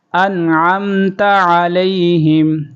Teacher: عین کی آواز نکالیں گے، انعمت علیہم، یہاں پر اظہار ہو رہا ہے